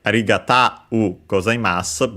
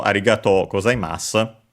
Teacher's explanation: a-u, the diphthong a-u, became o-u, so long o